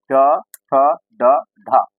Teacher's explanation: टवर्ग यानी कि जो मूर्धा, मूर्धा से क्या होगा टवर्ग, ट ठ ड ढ